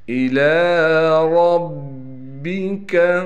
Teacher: را کو موٹا کر کے پڑھیں گے، اور را کو با سے ملا دیں گے